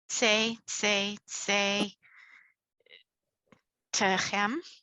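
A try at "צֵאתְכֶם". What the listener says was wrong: Yes.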